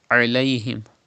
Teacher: It is alayhim from the middle part of your throat. And there is zabar before ya sakin. It is ya leen, and ya leen is pronounced without stretching. So you don't need to stretch as alayhim.